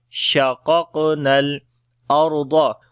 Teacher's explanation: Ra we read in heavy sound because ra is coming with sukun sign and there is fatha on the before letter